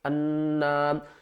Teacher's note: نون مشدد ہے تو اس کو ہم گھننے کے ساتھ پڑھیں گے